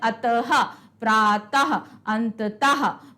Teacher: इस विसर्ग का उच्चारण हा से होता है